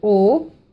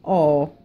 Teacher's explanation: una o chiusa lunga e una o aperta italiana lunga